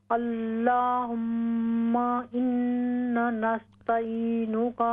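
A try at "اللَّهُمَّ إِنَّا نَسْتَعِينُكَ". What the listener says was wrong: ہاں جی یہ جو پہلا انا ہوگا یہ لمبا ہوگا.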